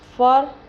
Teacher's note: رو حروف قلقلہ میں سے نہیں ہے مگر رو کو ہمیشہ پر پڑھتے ہیں